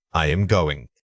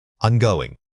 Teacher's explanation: Contraction versus full articulation. In fast speech, the auxiliary verb am almost always reduces to a quick sound and merges with the following word.